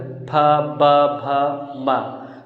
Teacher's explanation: ओष्ठ का मतलब क्या कि दोनों ओठ आपस में टच होते हैं।